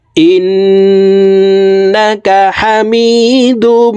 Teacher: হরকতের বামে নুনের উপরে তাসদিদ আছে এই কারণে এই হামজা তাশদি নুনের সাথে নাকের বাঁশি থেকে তিন সেকেন্ড পরিমাণ গুন্না করে ধরে রাখবো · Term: ওয়াজিব গুন্না